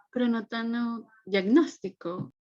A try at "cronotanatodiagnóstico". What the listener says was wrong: Omitiste una palabra, una sílaba. Cronotanatodiagnóstico, está en el chat. Cronotanatodiagnóstico.